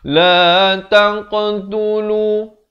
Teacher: Taq ada lantunan di sini qalqalah.